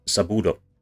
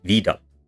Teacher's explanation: the voicing of intervocalic stops, so stop consonants that have a vowel on both sides of them. All of these stop consonants in both of these words.